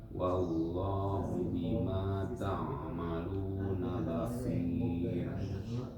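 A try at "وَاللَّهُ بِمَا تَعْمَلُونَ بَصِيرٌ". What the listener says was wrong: Huruf ain ya, huruf ain itu sebenarnya bukan huruf hidung. Nah, huruf tenggorokan. Ketika dibaca ta'malu bukan ta masuk ke hidung. Tapi ta'malu.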